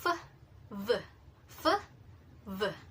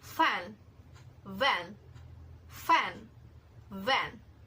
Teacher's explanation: labiodental fricatives, these are sounds formed using upper teeth and lower lips. So it is creating a friction, a hissing sound.